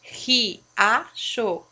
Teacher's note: o I e o A, que é o encontro vocálico, ele se separa. Se ele se separa, ele é um hiato.